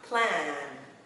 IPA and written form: plæn (Plan)